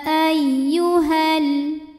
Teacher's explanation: sukun bertemu sukun tidak bisa dibaca sehingga sukun pertama dilepaskan secara pembacaannya jadi h nya pendek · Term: taqolus Bil halfi